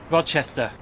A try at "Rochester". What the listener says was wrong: So, he's here and he's pronounced it Rodchester. It's not, it's Rochester. There's no D in it. Just say Rochester. Say it like that.